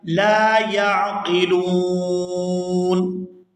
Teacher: وقف کی صورت میں نون جو ہے یہ ساکن ہو جائے گا